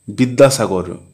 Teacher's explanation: সাধারণত বহুদল শব্দের প্রথম দলে শ্বাসাঘাত পড়ে। যেমন বিদ্যাসাগর শব্দের বিদ দলটিতে শ্বাসাঘাত পড়েছে।